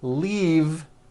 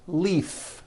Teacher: This last word, leave, is very different from the word leaf, like from a tree, which has an unvoiced F.